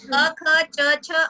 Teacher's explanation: क ख पहला दूसरा जो व्यंजन होता है वो अघोष होता है